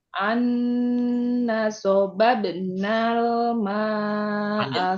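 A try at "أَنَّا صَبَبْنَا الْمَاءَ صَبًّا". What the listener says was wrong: Panjang. Naknya belum panjang. An-naso. Naso.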